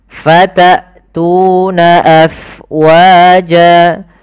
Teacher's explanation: jelaskan suara hamzahnya karena dia punya sifat yang mencolok, yaitu jahar dan syiddah.